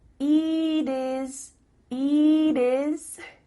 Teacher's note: the final T is changing to a d